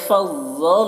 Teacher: فض میں ضاد کو پور پڑھنا ہے، حروف مستعلیہ میں سے ہے